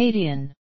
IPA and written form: ə'keɪdiən (Acadian)